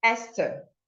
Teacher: And these exceptions are words like Esther. So you have to produce the TH in this word with the t sound